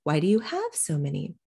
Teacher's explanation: I am de-accenting so many because we've already discussed that they have a lot of plants